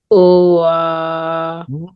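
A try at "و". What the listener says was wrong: Why you said wa? Is Wow has Fatha? So why you said wa? We read wa if waw has fatha. So then we read wa, but there is no fatha on waw. Waw has sukoon.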